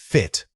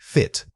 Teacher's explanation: Focus on the initial consonant F, making sure it's a clear friction of air off your teeth. Then, drop into that relaxed short vowel quickly.